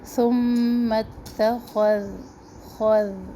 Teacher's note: اب یہاں پہ دھیان رکھنا ہے کہ خو اور دال، خو کے ساتھ دال کو موٹا نہ کرے اور دال کے ساتھ خو کو نرم نہ پڑے